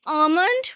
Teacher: in RP, we say almond without an L. And in American English, you can go on say almond.